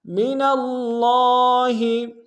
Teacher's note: نون کو لفظ اللہ کے لام کے سامنے آئیں گے، تشدید زور دیں گے، اگر لام کے اوپر کھڑا زبر ہے، ایک امتداد میں کھینچیں گے۔